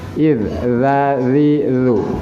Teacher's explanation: yang benar adalah ujung lidah berada pada ujung gigi atas. Zazilu itu suaranya akan keluar dengan sendirinya. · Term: suara zal